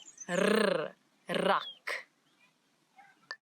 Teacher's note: it's the rrr, as if your tongue is jumping up and down in your mouth